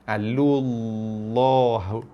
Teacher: tekan pada lafaz nama Allah ni dengan lam yang tebal